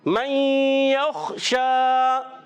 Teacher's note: کھڑا زبر ایک الف کھینچ کر ادا کریں گے، یعنی ایک الف اس کو کھینچنا ہے۔ · جب کبھی نون ساکن یا تنوین کے بعد 6 حروف میں سے 4 حروف جب آتے ہیں یا واو نون میم تو ادغام مع الغنہ، لام اور را آتے ہیں تو ادغام بلا غنہ، تو یہاں ادغام مع الغنہ غنہ ادا کریں گے۔ خا کو پر رکھیں گے، حرف مستعلیہ میں سے موٹے حروف میں سے ہے